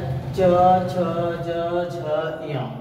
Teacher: जो जीवा का अग्र भाग है वो हमारे तालु को टच कर रहे, इसलिए च को हम तालव्य कहते हैं। यानी इनका जो जीवा जिस स्थान को मुख के अंदर छू रही वो तालु है, इसलिए इन्हें हम तालव्य वर्ण कहते हैं।